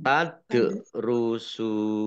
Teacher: karena bertemu dengan huruf terakhir yang dibaca sukun karena waqaf maka menjadi Mad Arid lisukun dibaca panjang boleh enam boleh empat boleh dua harakat